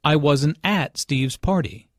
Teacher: the emphasis here is on at although prepositions normally have weak stress in this case at means there I wasn't there this